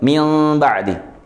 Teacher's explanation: dengan tidak menempelkan bibir ya ketika melafazkan mim sukun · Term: furja